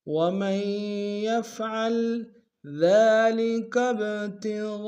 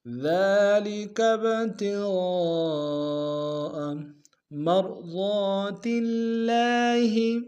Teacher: ذال کو باریک ادا کریں گے، ذال کے اوپر کھڑا زبر ایک اندام میں کھینچیں گے